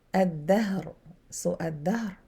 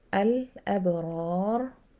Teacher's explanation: this lam is not pronounced, so it is lam shamsiyah